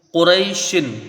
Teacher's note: या लीन है, यहाँ पर हुरूफ मद्दा से कुछ कम इसकी मिकदार रहेगी